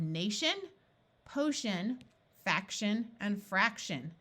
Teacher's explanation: The TI and the CI in these suffixes sound like sh.